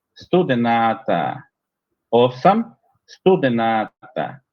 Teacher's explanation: respeté el acento, sí, pero recuperé una A ahí que es larga y a la A final la hice más larga todavía